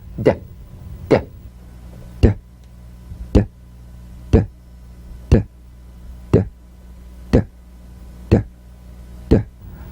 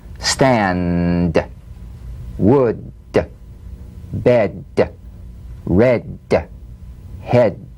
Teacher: Voiced tongue front, palatal stop consonant. Play this D drum beat on the springing away of the tongue from the upper gum ridge.